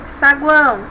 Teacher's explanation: é semivogal ou é semivogal a vogal e semivogal novamente saguão temos aqui uma sílaba nós temos uma semivogal uma vogal e outra semivogal saguão novamente iguais temos uma sílaba em que tem três sons